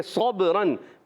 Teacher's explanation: با حروف قلقلہ میں سے قلقلہ ہوگا، آواز لوٹ کر آئے گی، را پر 2 زبر کی تنوین آ گئی، را پر ہو جائے گا۔